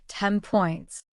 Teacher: The N sound in 10 changes because of the P sound that follows.